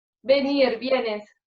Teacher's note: la pronunciación de la oclusiva bilabial sonora B como fricativo labiodental V, sobre todo cuando se escribe con V, parecida a la V francesa.